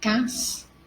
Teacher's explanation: Então, vel é mais forte, é terminada em L e não é acentuado. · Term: oxítona